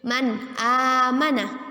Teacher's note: Ya, hukum bacaannya yaitu izhar halqi. Ketika nun sukun bertemu dengan huruf hamzah dalam bentuk alif, maka kita baca dengan apa arti izhar halqi? Ya, jelas, dengan jelas.